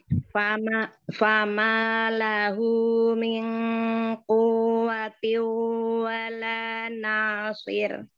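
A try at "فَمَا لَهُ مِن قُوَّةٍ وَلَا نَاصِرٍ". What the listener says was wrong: Ikhfa nun sukun ketemu qaf, tebalkan lagi ikhfanya. Waw tasydid apa? Naber. kenapa tadi enggak dinaber?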